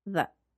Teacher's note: The article the is a function word and destressed because it doesn't carry much meaning in the sentence. The listener doesn't need to hear it clearly.